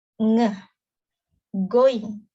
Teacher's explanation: Oral passage is blocked by pressing the back of your tongue against the soft palate. It is velar.